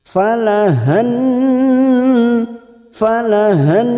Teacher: lam syamsiyah karena ada lam takrif yang tidak bersukun falahan falahan dan ditahan selama tiga harakat kita dengungkan